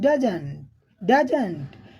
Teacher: ड हाई आवाज में बोला गया और जंट जो है स्लो आवाज में बोला गया